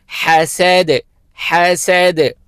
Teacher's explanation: हा को व हलक से अदा करेंगे